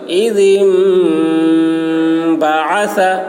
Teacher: ذال کی آواز باریک اور یہاں پر غنہ ہوگا